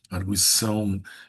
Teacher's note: Em arguição tem um ditongo, né? Porque eu digo arguição e argui é um ditongo crescente